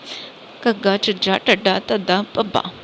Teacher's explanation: ਉਚਾਰਨ ਸਮੇਂ ਜੀਭ ਤਾਲੂ ਨੂੰ ਛੂ ਕੇ ਫਟਕੇ ਨਾਲ ਹੇਠਾਂ ਆ ਜਾਂਦੀ ਹੈ, ਅੜਾ ਅੜਾ, ਹੈ ਨਾ। ਘੋਸ਼ ਵਿਅੰਜਨ, ਘੋਸ਼ ਨੂੰ ਸਘੋਸ਼ ਤੇ ਮਹਾਪ੍ਰਾਣ ਵੀ ਕਹਿੰਦੇ ਹਨ। ਇਹਦੇ ਵਿੱਚ ਵਾਈਬ੍ਰੇਸ਼ਨਸ ਆਉਂਦੀਆਂ ਹਨ